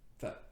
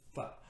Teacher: slightly curling the tip of the tongue back and creating a dental stop with the tip touching the top of the mouth where the gums meet the two front teeth